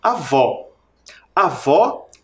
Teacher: o som mais forte em vó é lá no final na última sílaba tônica Então ela é oxítona terminada em o por isso que também